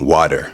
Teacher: So, the T is a D, like a soft D.